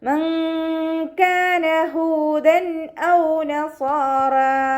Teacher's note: നൂൻ സാക്കിനയ്ക്ക് ശേഷം ഇഖ്ഫാൻ്റെ ലെറ്ററായിട്ടുള്ള കാഫ് വന്നിട്ടുണ്ട്. നൂൻ സാക്കിനയെ മറച്ചു വെച്ചിട്ട് മണിച്ചോതി കൊടുക്കുക. നൂറിൻ്റെ സൗണ്ടിനെ വ്യക്തമായിട്ട് കേൾപ്പിക്കാതെ ഹൈഡ് ചെയ്യുക, അതോടൊപ്പം തന്നെ മണിക്കും ചെയ്യുക കേട്ടോ. · ഹാൻ്റെ കൂടെ വൗമദ് വന്നിട്ടുണ്ട്, 2 കൗണ്ട് നീട്ടിക്കൊടുക്കുക